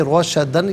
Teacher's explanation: رو پر زبر ہے، رو کو پر کر کے پڑھیں گے، روشدن، یہاں وقف کریں گے تو روشدہ پڑھا جائے گا۔